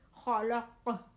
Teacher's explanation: قاف دو نقطوں والا قینچی والا موٹا قاف. قاف کی آواز موٹی اور جھٹکے والی ہوتی ہے، جیسے خلق. قاف بھی حروف قلقلہ میں سے ہے.